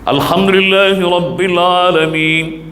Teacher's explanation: 2 harakat, matikan baris nun